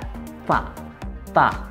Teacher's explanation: Jadi lidah itu menempel di gigi. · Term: huruf ta